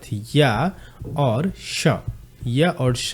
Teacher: य और श भी कहां से बोला जाता है? तालु से बोला।